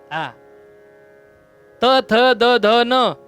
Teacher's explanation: त, थ, द, ध, न हे दंत्य आहेत. दाताला जीभ लावल्याशिवाय उच्चारता येत नाही.